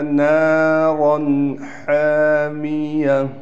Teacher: نون کے بعد الف ہے اور را کو موٹا کر کے پڑھا جائے گا، لیکن یہاں غنّہ نہیں کریں گے۔